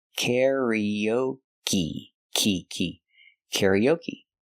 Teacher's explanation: the final e is pronounced with a long e like green beans